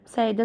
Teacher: Səidə sözünün tələffüzündə ə-lə i var deyə ə-lə i-nin arasına y girəcək.